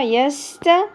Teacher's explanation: ت تو ت باریکی سے ادا ہوگا